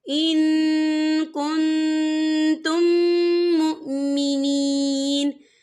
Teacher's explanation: یہ دیکھیے ان یہاں نون ساکن ہے، نون ساکن کے بعد جو ہے کاف آ رہا ہے، اور کاف جو ہے اکفا کا ورڈ ہے، تو ہم یہاں اکفا کریں گے، نون ساکن کی آواز کو ناک میں چھپائیں گے · اور یہاں دیکھیں ان کنتم، یہاں میم ساکن ہے، میم ساکن کے بعد جو ہے میم مشدد آ رہا ہے، تو یہاں پر ادغام شفوی ہوگا، ہم پچھلے میم کو اگلے میم میں مدغم کریں گے، اور یہاں غنہ بھی ہوگا۔